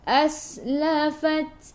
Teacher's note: sin sifat hurufnya safir, kena bunyikan berdesir